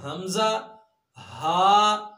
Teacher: सबसे नीचे वाला हिस्सा जो सीने की तरफ है, यहां से हमजा, हा अदा होते हैं।